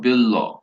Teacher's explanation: পূর্ববর্তী ল এর প্রভাবে পরবর্তী ব হয়ে গেছে ল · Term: সমীভবন